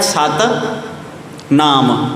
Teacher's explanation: ਸਤਿਨਾਮ ਦੇ ਮੰਮੇ ਨੂੰ ਔਂਕੜ ਲੱਗਾ ਹੋਇਆ, ਪਰ ਔਂਕੜ ਪੜ੍ਹਿਆ ਨਹੀਂ ਜਾਂਦਾ।